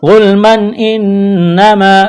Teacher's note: تنوین کے بعد حمزہ ہے، حروف حلقی ہے، اظہار کریں گے · نون مشدد ہے، غنہ کریں گے، الف مدہ ہے، ایک الف کے برابر کھینچنا ہے